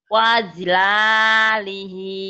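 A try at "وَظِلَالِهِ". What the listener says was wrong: Bukan ji, ini khi. Wakhila. Wakhila lihi. Wakhila lihi.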